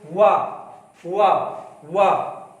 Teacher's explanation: दंत और ओठ दोनों का हो रहा है